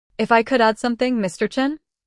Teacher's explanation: Notice the rising intonation. That's how you sound respectful.